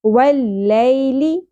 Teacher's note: لی، لیل نہیں پڑھنا، لی۔ واللیل، لام سے لی شارٹ پڑھیں گے، کھینچنا نہیں ہے · ای حمزہ کے نیچے زیر ہے، اس کو ہم شارٹ پڑھیں گے۔ ذال نرمی سے ادا ہوگا، سیٹی یا بزنگ ساؤنڈ نہیں آنی چاہیے، یہ والی ساؤنڈ نہیں ہوگی۔